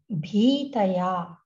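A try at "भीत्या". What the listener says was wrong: Bhitya. Ta is only half. Bhitya. Bhitya.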